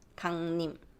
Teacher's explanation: So 리을, because it's bothersome to pronounce it very clearly, we just do N.